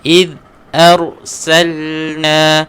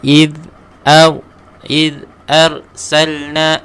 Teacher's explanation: Angkatkan huruf ra, tebalkan sikit. إذ أرسلنا. Jangan baca إذ arsalna huruf ra nipis.